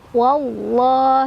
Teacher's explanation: Jadi ditebalkan. Tebal itu artinya pangkal lidah kita naik. Terus bunyi huruf lamnya seolah-olah memenuhi rongga mulut kita ya. Jadi penuh dalam mulut, wallah gitu. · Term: lam jalalah yang tebal